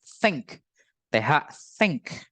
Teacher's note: ada TH yang gak bergetar, hanya pengucapannya dihembus napas saja